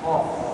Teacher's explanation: Manakala qaf dia ada ke belakang sedikit.